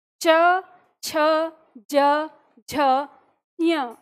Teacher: आपकी जीव तालू स्थान को छू रही है